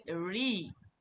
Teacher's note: রি উচ্চারণ করতে গেলে আমাদের মূর্ধাকে স্পর্শ করতে হয় না, কিন্তু মূর্ধার কাছে যেতে হয়, জিহ্বাটিকে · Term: মূর্ধন্য স্বর